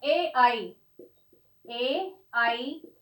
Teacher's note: ए आई, इन दो वर्णों का उच्चारण स्थान कंठ तालु है। इनको कंठ तालव्य भी कह देते हैं, कंठ तालु भी कह देते हैं।